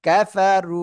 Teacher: দেখেন র উপরে পেশ মোটা আওয়াজে পড়বেন